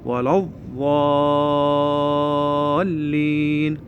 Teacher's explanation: نصعد لساننا لي فوق وطرف اللسان لي فوق، ونودي لساننا على ناحية اليسار، ونحس يكون اكو انتفاخ بالحلق بالفم اثناء النطق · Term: حرف الضاد